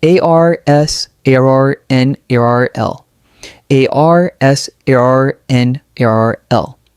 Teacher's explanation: Notice how the first syllable is strong and clear and the others are quick and light.